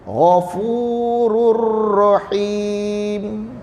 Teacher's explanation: Tanwin tu terus masuk dalam ra kat depan.